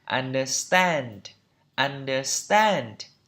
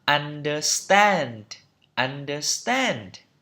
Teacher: Trọng âm ở tiết thứ 3 đây.